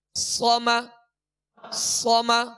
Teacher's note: सौद जबर सौ, मीम जबर म, सम सम। सौद को पुर पढ़ेंगे और इसमें सीटी की आवाज पैदा होगी